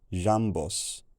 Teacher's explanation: this vowel in the first syllable lost its lip rounding and took a lower tongue position